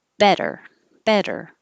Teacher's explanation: Um, it's really, I always say it sounds like a D. The T changes to a D, but the technical term is an alveolar flap because the spot behind your top teeth where the D and the T touch is called the alveolar ridge.